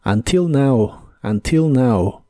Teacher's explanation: La forma más común quizá es until, con el acento en la I.